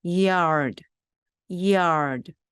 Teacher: 여기 나오는 d도 거의 소리를 내지 않도록 아주 작게 하셔야 됩니다.